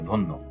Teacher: ধ এর সাথে অ আছে। অ এর পরে জফলা আছে। এজন্য অটা ও হয়েছে।